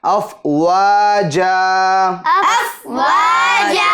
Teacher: وقف کریں گے تو اس دو زبر کو الف سے بدل دیں گے